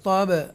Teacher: تب حروف قلقلہ میں با ہے اس لیے جنبش کے ساتھ ایکو ساؤنڈ کے ساتھ ادا کریں گے